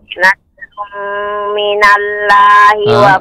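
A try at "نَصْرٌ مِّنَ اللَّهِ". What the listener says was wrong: sebentar Ibu, lafaz Allah tebal ya. Nasrum ru itu monyong sedikit, kembali lagi. Nasrum minallahi wa fathun qarib.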